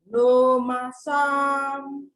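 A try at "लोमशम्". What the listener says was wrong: But don't, now you have you almost like you're stopping a little bit. So go right through it. Lomasham.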